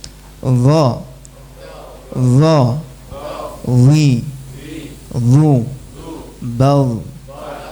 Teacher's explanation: karena area yang nempel lebih luas ujung lidah plus punggungnya ujung lidah akhirnya suaranya jadi tebal